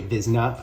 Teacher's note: sometimes they eat their syllables and they say vizna as well